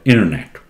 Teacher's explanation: somehow this t is almost swallowed